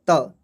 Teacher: जीभ टकराता है दांत से और उससे बोला जाता है दंत। ये दंत से ध्वनियाँ निकलती है।